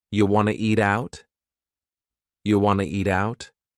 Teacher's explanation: we have reduced want to to become wanna. This is a common reduction in English.